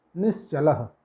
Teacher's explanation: जहाँ पे चकार आएगा, च और छ आएगा, वहाँ पे तालव्य सा हो जाएगा।